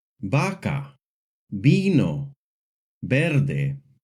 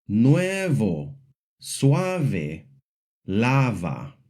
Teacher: The letter V in Spanish makes a hard B sound, like in the words vaca, vino, verde. But it can also make a soft B sound when it is between two vowels, like in the words nuevo, suave, lava.